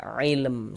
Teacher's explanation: karena berwakaf kemudian huruf mim ini enggak dibaca panjang. Jadi karena berwakaf atau berhenti yang di huruf yang tidak dibaca panjang seya huruf mim ini kita sukunkan, kita matikan sehingga kita baca ilm seperti itu.